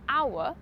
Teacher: When we have nouns or adjectives where the /h/ is not pronounced, such as ‘hour’ – it sounds more like ‘our’